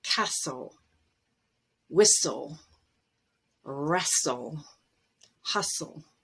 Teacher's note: And also if you take soft and make it a verb with en, the T will drop there as well, soften. And at the end of a word, if you have S-T-L-E, T is always dropped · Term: silent t